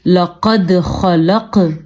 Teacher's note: دال میں ہم نے قلقلہ کیا ہے کیونکہ دال ساکن ہے, حروف قلقلہ میں شامل ہے قطب جدن, قاف, طا, با, جیم, دال.